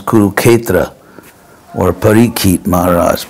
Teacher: they eliminated the S, so it becomes Kuruketra or Parikit Maharaj. It's just it's a very common example of simplifying consonant clusters.